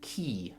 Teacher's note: perhaps the vowel e e makes your tongue go quite high in your mouth